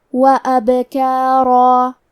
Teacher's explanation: آخری میں را پہ تنوین زبر ہے، لہذا ہم یہ کلمہ پہ رکیں گے تو تنوین زبر پہ مد الف سے رکیں گے تو ہمیں را کو اور مد الف کو دونوں کو تفخیم سے ادا کرنا ہے